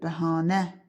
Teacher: Vurğu sonuncu hecanın üzərindədir. Bəhanə düzdür.